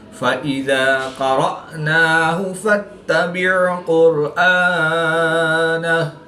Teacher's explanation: حمزہ ساکن ہے جس کو جھٹکا دے کر پڑھیں گے